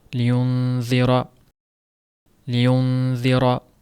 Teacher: liyunziro deganda yengilroq bo'ladi liyun degan bir yog'on tovish berilmaydi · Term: yumshoq